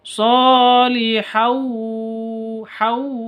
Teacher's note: Hau, tanwin bertemu dengan wawu, bacaan idgham bi gunnah langsung masuk ke wawu disertai dengan dengung